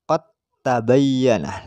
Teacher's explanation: tapi dibaca qad tabayyana, langsung taknya ditasydidkan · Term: idgham mutajanisain